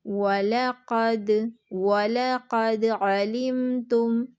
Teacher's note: ویک قلقلہ کریں گے، یعنی دال کو تھوڑا سا ہلا کے پڑھیں گے، تھوڑا سا جنبش کے ساتھ پڑھیں گے، دال کے مخرج میں تھوڑی سی حرکت ہوگی، تھوڑی سی آواز پلٹ کر واپس آئے گی